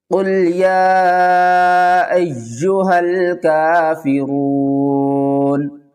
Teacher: وقف کی صورت میں نون کو ساکن پڑھیں گے